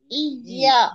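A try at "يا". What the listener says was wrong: हाँ, या बोलते हैं ना। जो या को लंबा करिए, या। उसी तरह उसी तरह या को ई भी ऐसे बोलिए, ई। नहीं, जड़ नहीं, जड़ नहीं, जड़ नहीं है, बीच से काम होगा। या में, बीच जबान का बीच का या में क्या हुआ, या।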